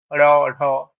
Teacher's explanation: এগুলো যখন আমরা উচ্চারণ করব তখন আমরা বুঝতে পারবো যে হ্যাঁ, জিভটা একটাবার ওপরে গিয়ে ঠেকে, তারপরে বাতাসটা খুব জোরে জিভটাকে সরিয়ে দেয় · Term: তাড়িত ধ্বনি